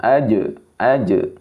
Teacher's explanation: huruf jim mempunyai sifat syiddah. Laju suara tertahan. Ketika dia mati dia suaranya tertahan. Tidak ada tidak rhawah, tidak jalan.